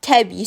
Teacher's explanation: qoşa saitlərdən biri düşür, digəri isə uzun tələffüz olunur